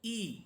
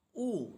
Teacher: জেরের উচ্চারণ এটা ঠোঁট দুদিকে ছড়িয়ে বলতে হয় যেমন হামজা জের ই এবং পেশের উচ্চারণ ঠোঁট গোল করে পড়তে হয়